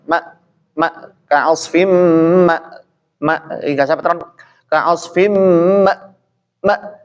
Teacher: Nah terkait dengan eh huruf ham Hamzah seperti itu yang mana Hamzah menekan tapi berdasarkan pendapat beliau ya secara halus dan tidak terlalu menekan